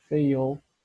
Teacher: Fail, ó, novamente o Lzinho, né? Fail, o Lzinho tocando no céu da boca, ou a linguinha tocando no céu da boca, né? Fail.